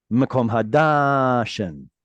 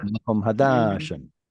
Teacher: Mekom Construct with the next one. Because it's in construct, we're going to rush that first word to get to the accented syllable, which means long vowels go shorter.